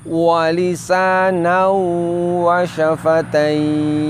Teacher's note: wawu sukun dan ya sukunnya dibaca panjang sampai 3 alif atau 6 harokat. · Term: mad lin